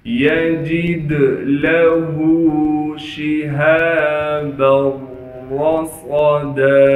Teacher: دال حروف قلقلہ میں سے ہونے کی وجہ سے دال میں قلقلہ کریں گے. ہا پر الٹا پیش ہونے کی وجہ سے ہا کو ایک الف کی مقدار کھینچیں گے · ہا کے بعد الف ہونے کی وجہ سے ہا کو ایک الف کی مقدار کھینچیں گے. با کو آگے را سے ملا دیں گے اس لیے کہ را پر تشدید ہے. را پر زبر ہونے کی وجہ سے را کو موٹا کر کے پڑھیں گے.